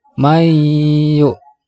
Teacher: ini adalah idgham bighunnah mbabadan nun sukun menghadapi huruf ya cara membacanya harus didengungkan